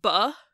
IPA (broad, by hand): bʌ